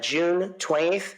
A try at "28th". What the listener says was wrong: The way you say that, by the way, if I were listening, I'd think you said 20th. It's 28th.